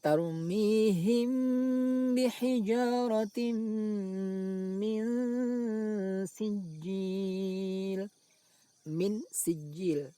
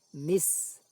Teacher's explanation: suara nun sukun dibaca samar, yaitu tidak dibaca idhar, min juga tidak dibaca idham, mis, akan tapi samar antara keduanya, min, lalu didengungkan, min sijil. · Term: ikhfa